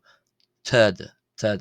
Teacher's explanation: It's more accurately an Arabic emphatic t